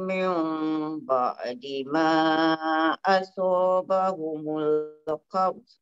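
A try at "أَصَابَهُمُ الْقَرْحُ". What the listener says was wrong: Asabahumul qarh. Bunyikan ha. Qarh. Tebalkan ni jangan qarh. Sebab qaf tu dia huruf istilah kan. Asabahumul qarh. Qarh.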